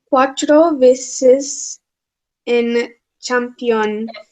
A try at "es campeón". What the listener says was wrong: Es. Es, you said N. Es campeón.